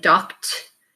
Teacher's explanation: Remember, it has to do with the voicing of the last sound of your base word. So again, k is unvoiced, so the ed is going to sound like a t.